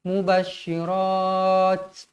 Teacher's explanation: Ta ni kalau kita matikan dekat sini, huruf ta ni mestilah dihamaskan, dianginkan dia.